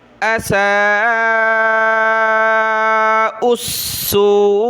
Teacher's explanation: حمزہ کے اوپر یہ کھڑا زبر مد ہے تو اس کو زیادہ کھینچنا ہے. سین کو واو کی طرف کھینچنا ہے مد کی وجہ سے.